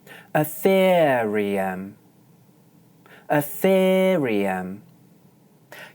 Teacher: Notice that for the stressed second syllable I hold one stable pitch